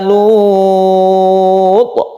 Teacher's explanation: Kemudian toknya dikolkolakan. Ini disebut kolkolah kubra karena berada di akhir kata yang diwakafkan ya.